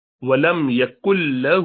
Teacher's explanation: نون گرا دیا پورا لام کے ساتھ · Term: ادغام